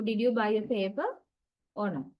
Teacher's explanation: Remember, if there are two such tone groups, first tone group receives the rising intonation and the second tone group receives the falling intonation